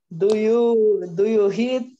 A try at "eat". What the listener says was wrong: No es hit, es e.